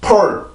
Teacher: 지금 내가 그 치조를 맡고 있는 혀의 힘을 강하게 줄 필요가 없이 지금 pour 까지 했을 때 남아있는 공기만 이용을 하는 거예요. 그래서 그 상태에서 내가 치조를 그냥 혀를 닿았다가 떨어지기만 하면 돼요. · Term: 치조 폐쇄음